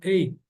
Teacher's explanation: A maioria de norte-americano fala só eight. Encosta a língua, pressiona a língua lá no céu da boca, eight. Praticamente não sai esse t. Se vocês quiserem falar com som de t, eight, não tem problema absolutamente nenhum.